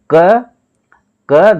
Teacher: देखिए क क धन आ क में आ छिपा हुआ है क अगर हम बोलेंगे तो लास्ट में अ बोलता है मुंह से अ निकलता है